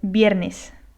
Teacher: the sound of the V is somewhere between V and B. V and B, so it's like viernes.